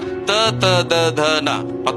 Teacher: ಢ ಣ ನಾಲಿಗೆಯನ್ನು ಸ್ವಲ್ಪ ತಿರುಗಿಸಿ ಹೇಳುವಂತಹ ಶಬ್ದಗಳು ಗುಂಪು ಇನ್ನು ಮುಂದೆ ಬಂದರೆ ನಾಲಿಗೆಯ ತುದಿ ಮತ್ತು ಹಲ್ಲುಗಳ ಸಹಾಯದಿಂದ ಹೇಳುವಂತಹ